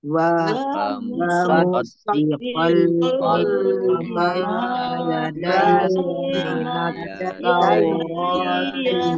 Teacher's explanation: Fathah tanwin bertemu dengan huruf lam, bacaan idgham bila gunah, masuk dengan tidak mendengung